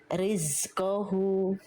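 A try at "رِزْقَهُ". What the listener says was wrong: Jangan bocor ke sin. Jangan ada nafas.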